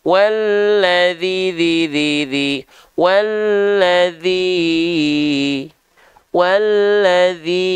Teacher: bagian huruf dalalnya ya kan huruf dalalnya yang berharakat kasrah maka empat harakat itu seperti kadar melafalkan dzi sebanyak empat kali